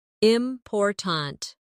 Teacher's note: in the word important, we stress the second syllable, important. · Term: word stress